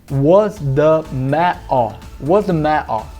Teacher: Lá no norte, em Manchester, esses T's, a gente chama eles também de glottal stop, que é não fazer o T, na verdade, fazer um O no lugar dele. Então, em vez de falar what, fica wo, was the ma-o, was the ma-o.